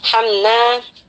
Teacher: kita baca jelas mimnya, jangan sampai terpantulkan dan juga tidak lama ya kita membaca mim di sini. Warhamna, jadi jangan warhamna. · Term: izhar syafawi